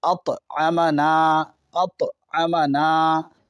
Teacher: طا حرف قلقلہ ہے، اس پہ جزم ہے، آواز لوٹے گی